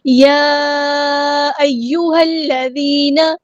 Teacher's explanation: ہاں کو ہم نے سمپل پروناؤنس کرنا ہے، ہاں کو لام کے ساتھ ملا دینا ہے، حمزۃ الوصل یہاں پہ ڈراپ ہو جائے گا، لام یہاں پہ تشدید والا ہے تو دھیان سے پڑھنا ہے۔